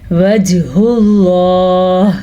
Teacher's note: جیم پہ قلقلہ ہو رہا ہے کیونکہ جیم حروف قلقلہ میں سے ہے